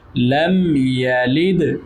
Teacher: میم ساکن ہے اور یا ہے تو یہاں پر اظہار شفوی. لم یلد دال پر جزم ہے تو دال حروف کلکلا میں سے ہے اس لیے اس پر کلکلا بھی کریں گے.